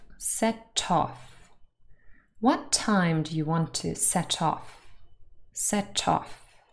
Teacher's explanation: And there's also linking happening here. The T from set joins of and sounds like toff.